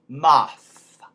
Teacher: We have a soft, voiceless TH, so that's going to become an F, moth. And really blowing that F, moth.